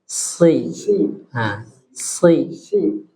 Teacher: fokusnya ujung lidah kita di gigi seri bawah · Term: huruf sod